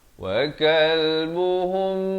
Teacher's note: mim mati bertemu ba, ikhfa syafawi dipanjangkan 2 harakat. Jangan lupa mim mati kalau bertemu ba sudah pasti, kalau dalam Al-Quran Al-Musmani mimnya kosong, tidak ada tanda mati asli ya, tak ada tanda sukun.